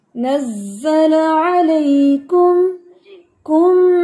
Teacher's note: लाम की जबर को थोड़ा सा भी खींचना नहीं है आपने